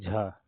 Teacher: तालब भी है महाप्राण भी है और घोष भी है